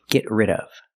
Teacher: The D in rid is a fast D.